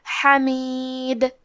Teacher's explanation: ہم یہ کلمہ پر روکیں گے تو دال پہ جزم سے روکیں گے، تو یہاں دال کا حکم ہے قلقلہ، تو ہم حرف الدال کو ہلاتے ہوئے یہ کلمہ کو پڑھیں گے